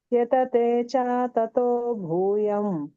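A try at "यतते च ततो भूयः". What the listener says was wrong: ಅಲ್ಲಿ ಭೂಯಹ ಅಂತ ಹೇಳಬೇಕು ಮಾತಜಿ ವಿಸರ್ಗ ಇದೆ ನೋಡಿ ಎರಡು ಸೊನ್ನೆ ಕಾಣ್ತಇದೆ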